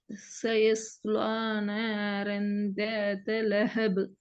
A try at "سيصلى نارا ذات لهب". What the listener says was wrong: ராகம் தான் தேவை. இங்க பிரச்சனை இப்ப ராகம் தான். எப்படி ராகத்த எடுக்கிற? எப்படி ராகத்த எடுக்கிறங்கிறத இன்னும் நீங்க ஓத ஓத வரும்போது سيصلى نارا ذات لهب.